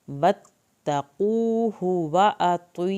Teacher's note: वत्तक़ूहु क़ाफ को पुर करना है, ता को नरमी से अदा करना है, हा की पेश को लंबा नहीं करना।